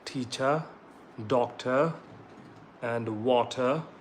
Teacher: we drop r at the end or after the vowel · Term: British English